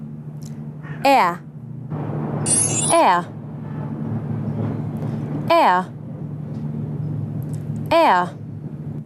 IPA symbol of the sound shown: eə